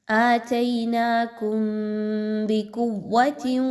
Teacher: تا کے نیچے 2 زیر کی تنوین کے بعد واو کا حرف آ گیا، تنوین کے بعد واو کا حرف آ رہا ہے، غنہ کر کے پڑھیے · میم ساکن کے بعد با کا حرف آ رہا ہے، یہاں پر غنہ کیجیے۔